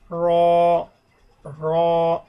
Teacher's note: জিহ্বার নিচের অংশ, আগার নিচের অংশ তার বরাবর উপরে তালুর সঙ্গে লাগাইয়া এভাবে র র এভাবে।